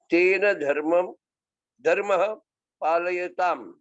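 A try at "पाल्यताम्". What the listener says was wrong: Palayatam, no? Palyatam. That akara is not.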